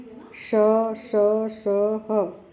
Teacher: जीभ और तालु के बीच में एक संघर्ष पैदा हो रहा है और हवा निकल रही है, संघर्ष से हवा निकल रही है, इसीलिए इनको संघर्षी बोला गया है।